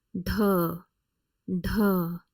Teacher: Next one is retroflex aspirated D, written as DHA.